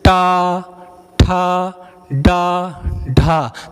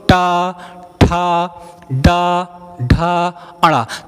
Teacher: हमारी जीभ का अगला हिस्सा अंदर की ओर गोल गोल होकर हो जा रहा है और झटके से बाहर आ रहा है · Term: मूर्धा वर्ण